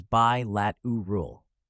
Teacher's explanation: Notice how the stress falls on the second syllable 'LAT'